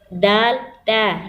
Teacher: زبان کی نوک سامنے والے 2 دانتوں کی جڑ سے لگے گی تو ادا ہوگا۔